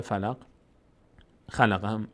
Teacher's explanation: یعنی قاف از مخرجش در مخرجش میلرزه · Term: غلغله